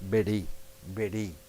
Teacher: there is a soft puff of air over the top of the tongue